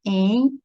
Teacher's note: ditongo, dois sons vocálicos na mesma sílaba e é nasal